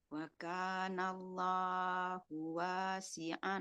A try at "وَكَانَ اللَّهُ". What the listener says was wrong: Allahnya kepanjangan. Lamnya panjang.